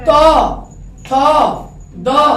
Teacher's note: त दांत से टकराया, थ दांत से टकरा रहा है, तो ये दंत होगा।